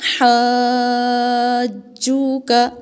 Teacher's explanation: کیونکہ جیم پر تشدید ہے تو اس کو سخت آواز کے ساتھ پڑھیں گے